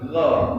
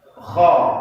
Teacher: Kalau gha itu agak berat keluarnya. Kalau kha itu dilepas, terbuka mulutnya.